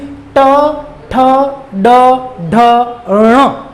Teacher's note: इनका जब आप उच्चारण करोगे तो आपकी जीवा, आपकी जीभ मूर्धा नामक भाग को स्पर्श करती है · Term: मूर्धन्य ध्वनियां